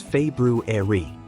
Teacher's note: The correct pronunciation includes the R sound after the B, though it's often dropped in casual speech.